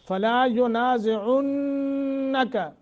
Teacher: نون مشدد ہے غنہ کر کے پڑھیں گے